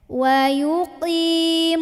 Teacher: Dari nun langsung tekan ke shad, alif lam lewat, nggak usah dibaca.